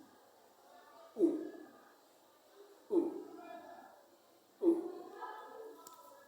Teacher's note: When you say the sound, your mouth is open and the lips are rounded. The back of the tongue is raised towards the roof of the mouth, and it is pronounced O. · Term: short sound